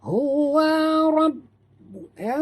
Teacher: Huwa rabb, ha simpul bunyi berdalam halqum. Ra tafkhim tebal dan jud pada ba di atas ba ada tasydid.